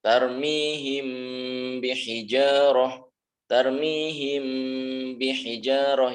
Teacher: Mengatup. Tidak bisa mim itu membaca dengan menganga, mulutnya menganga, tidak bisa, harus mengatup. · ketika mim sukun bertemu dengan huruf ba, maka mengatup. Cara membacanya mengatup.